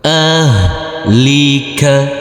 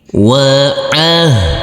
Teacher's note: Huruf ha sukun tidak boleh dipantulkan.